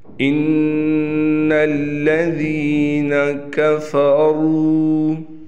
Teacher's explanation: इन्नल्लज़ीना कफ़रू, यहाँ पर नून मुशद्दद है। इस नून मुशद्दद पर एक अलिफ के बराबर हम गुन्ना करेंगे, यानी नाक में आवाज़ को लेकर जाएंगे।